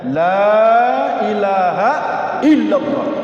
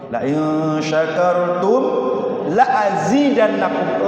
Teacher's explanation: Lam di situ lamun nahi, mesti dipanjangkan bacanya.